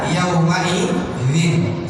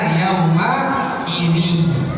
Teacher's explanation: Kalau yang bi gunnah beda Pak, dia harus dengung.